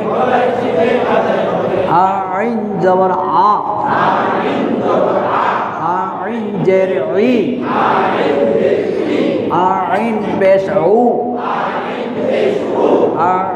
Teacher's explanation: আইন হলকের মাঝখান থেকে গলায় চিপে আদায় হবে